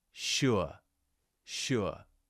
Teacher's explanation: we're starting with that round shape with the lips and then going into that neutral shape at the end